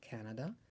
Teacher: Fillimisht kur themi Canada bie në fillim te rrokja e parë. Si shikoni kemi dhe vizën nga poshtë tek emri Canada. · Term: theksi